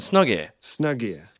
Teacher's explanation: you can actually drop the H in here